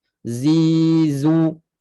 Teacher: Dan dia ada sifat safir, desiran bunyi macam lebah. Zizu. bunyi kuat.